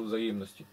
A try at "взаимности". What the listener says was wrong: Взаимности. Ты как-то слова в конце вообще заглатываешь.